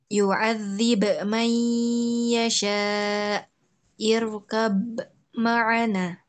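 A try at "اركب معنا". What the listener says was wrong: Nah, di sini nggak ada tasdid. Irkab.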